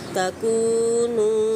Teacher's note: कू को हमने एक से दो हरकत खींचना है, जबकि नू को हमने 3 से 4 हरकत खींचना है